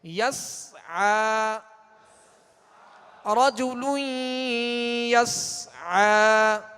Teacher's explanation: سکون ہے، لہذا اس کی آواز ہلے گی نہیں، قلقلہ پیدا نہ ہو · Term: سکون کامل